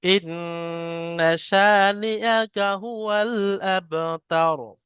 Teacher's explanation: ইন্না, এখানে নুন আবার তাসদিদ আছে, তাই নুনটা গুণনা হবে। শা একালিফ পরিমাণ টান আলিফ মাদ্দা হওয়ার কারণে। হুয়াল আবতার, বা এর উপরে সাকিন আছে, কফ ত বা জিম দাল, এই পাঁচটা অক্ষরকে যখন সাকিন থাকে তখন কলকলা করে পড়তে হয়, অর্থাৎ ধাক্কা লেগে পড়তে হয়, তাহলে এটা আবতার।